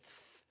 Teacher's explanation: Dental is like the TH in English, th, where your tongue makes contact with your teeth, dental.